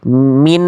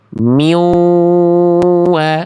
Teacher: Karena nunnya masih ada min harusnya miw wa udah enggak ada nunnya. Nunnya sudah di leburkan ke wau ya.